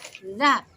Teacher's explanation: Za di ujung lidah dan agak sedikit keluar angin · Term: huruf za